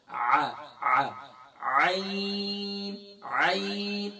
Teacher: हमजा का साउंड अदा करते हैं, हमजा की आवाज निकालते हैं। यहाँ हमजा की आवाज नहीं निकालेंगे बल्कि यहाँ आइन की आवाज निकालेंगे · यहाँ हमजा की आवाज नहीं निकालेंगे बल्कि यहाँ आइन की आवाज निकालेंगे और आइन की अदायगी गले के मिडल से होती है, वस्ते हलक से होती है